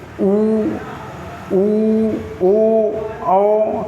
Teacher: होंठ की आकृति पूरी गोल हो जाती है, यानी वृत्त बनता है, तो उसे हम वृत्तमुखी स्वर कहते हैं।